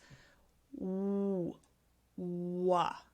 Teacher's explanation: if you want to make the W, what happens is you actually round your lips